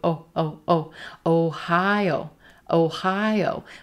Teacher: We don't have any schwas in this word.